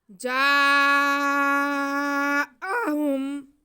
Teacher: اس کو ہم جیم کی آواز کو 4 الف کے برابر کھینچیں گے۔ جاء، آگے ہاں پہ پیش اور میم ساکن ہے، تو ان کو بالکل نہیں کھینچنا